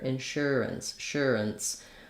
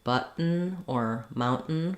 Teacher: we basically have no vowel sound. So we go right from the vowel, or from the R sound to the N. So that's called a syllabic N.